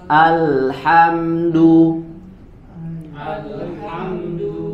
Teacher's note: walaupun di sini Hamzah wasal tapi ketika dibaca di ee awal kalimat maka harus dibaca dengan Hamzah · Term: huruf hamzah